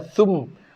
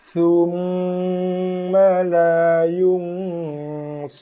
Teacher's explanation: jaga kadar satu harakat dulu baru kacipkan pada mim. Tak nak baca dengan thum, bukan thum tapi thumma la yunsarun.